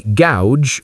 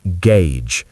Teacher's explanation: Well, the correct pronunciation is gauge. The letter A is pronounced with the A diphthong, like in pay, and the letters U-G-E make a J, as in jeans.